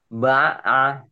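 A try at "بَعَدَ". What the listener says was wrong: Ba'a. Ba'a. Kurang kurang kurang ketenggorokan. Ba'a ini huruf hal huruf tenggorokan. Ba'a ya, ain. Nggak ada yang panjang. Ba'ada, ba'ada, ba'ada.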